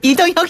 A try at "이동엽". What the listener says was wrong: 저는 동혁이 아니라 이동엽입니다. 엽. 협 아니고 엽. 혁 아니고 엽. 엽.